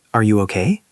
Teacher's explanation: Say, Are you okay? with rising tone.